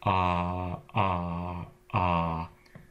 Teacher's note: is if you rearticulate a vowel sound like ah ah ah that catch in your throat that stops the sound that is the glottal stop